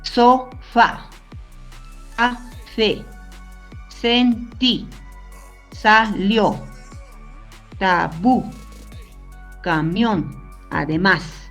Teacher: Aquí lo importante es la acentuación, el tono de voz, así fuerte, yo lo pongo en la última sílaba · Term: palabras agudas